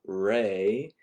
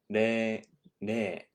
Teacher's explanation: The Japanese R sound, the tip of your tongue will just kind of briefly touch the space before the plateau. So you have your teeth, you have, okay, this is your teeth, this is the plateau between your teeth, and then there is a kind of slope after that.